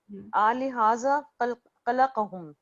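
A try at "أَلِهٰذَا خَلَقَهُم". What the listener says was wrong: ये आ नहीं है, ये अ है, ओके, अ यानी जैसे हर क्वेश्चन मार्क है, ठीक है ना, आनी आलिहा डिफरेंट होता है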